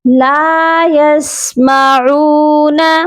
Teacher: لام کو ایک الف کی مقدار لمبا کر کے پڑھیں گے کیونکہ لام کے ساتھ الف ہے. یسمعون، عین کی آواز حلق سے آئے گی اور عین کو بھی ایک الف کی مقدار لمبا کر کے پڑھا جائے گا.